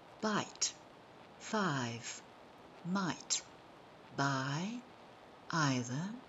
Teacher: I is a long vowel and diphthong and it sounds like ie it is written with an eye in the words like bite